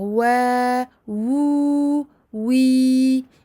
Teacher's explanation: faites attention à bien sortir le son des prolongations par la bouche, uniquement par la bouche, et non pas nasaliser ce son.